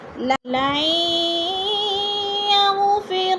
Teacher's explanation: لام کو یا کے ساتھ ملا کر پڑھیں گے، نون ساکن نہیں پڑھا جائے گا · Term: ادغام